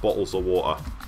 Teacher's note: Certainly where I'm from, you wouldn't say a T sound, so you would say it would be bottles of water would be from the north. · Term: drop the T